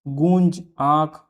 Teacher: वायु का कुछ अंश नाक से निकलने के कारण स्वर में अनुनासिकता आ जाती है।